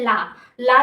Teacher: जब हम बोलते हैं तो हमारे जीभ के अगल बगल से वायु बाहर आती है और जो ध्वनि बाहर आती है उसे ही हम पार्श्विक व्यंजन बोलते हैं।